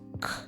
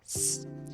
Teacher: The K sound is made in the back of your mouth, while the S sound is in the front. K, S. So when you make the sound, your tongue goes from the back of your mouth to the front.